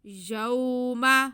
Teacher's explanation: واو ساکن سے پہلے زبر، واو لین، اس کو بالکل نہیں کھینچنا